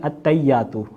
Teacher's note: مثال کے طور پر اگر ہم التحیات نماز میں پڑھ رہے ہیں, اب اکثر لوگ سے آپ خود سن لیں التحیات ہے, لیکن جب آپ ان سے سنیں گے تو وہ پڑھیں گے التحیات, ہا کو انہوں نے جو ہے حذف کر دیا